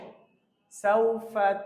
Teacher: ফা বলার সময় নরম হবে, সামনের উপরের দুই দাঁত, নিচের ঠোঁটের পেট মাঝখান বরাবর লাগলেই ফাটা এমনি আওয়াজ উচ্চারণ হয়ে যাবে।